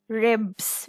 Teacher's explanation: Rule number 3 says, S says Z after a voiced consonant.